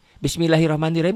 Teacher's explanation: Jadi tidak panjangnya satu alif lagi 2 ketukan tapi menjadi 5 ketukan. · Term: mad arid disukun